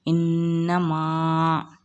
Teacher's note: یہاں پر نون مشدد ہے، اس کو ہم غنہ کے ساتھ پڑھیں گے۔ الف سے پہلے زبر ہے تو الف مدہ ہوگا، اس کو ہم ایک الف کی مقدار کھینچ کر پڑھیں گے۔